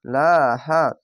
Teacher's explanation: খাড় জোরে আলিফ টেনে পড়বেন